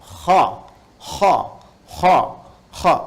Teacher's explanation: bagian ee pangkal lidah di paling ujung itu itu menyentuh ke langit-langit sehingga ketika dia ke atas suaranya lebih tebal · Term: Huruf istillah